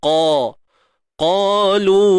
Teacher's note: qa 2 harakat tebal selamanya. Angkat pangkal lidah kita.